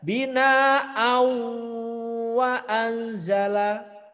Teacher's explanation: Ini kalau dibaca asli justru salah. Harus dibaca idgham lebur dan dengung